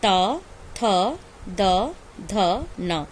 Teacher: ता वर्ग का उच्चारण स्थान है दंत। जब हम उच्चारण करते हैं तो हमारी जीभ कहाँ जाती है, दांत के पास चली जाती है।